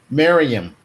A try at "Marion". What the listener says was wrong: No, there's no M.